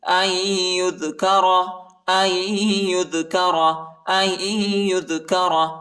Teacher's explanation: حمزہ کو یا کے ساتھ ملائیں گے، نون ساکنہ ہے، نون نہیں پڑھا جاتا اور ادھر جو ہے غنہ بھی ہے